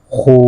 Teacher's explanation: واو کو آپ نے موٹا نہیں کرنا، خا کو موٹا کرنا ہے